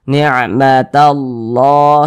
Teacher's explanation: Kalau ada lafaz Allah nih sebelumnya ada tanda baca fathah seperti ini atau tanda baca dhammah, maka lafaz Allahnya dibaca tebal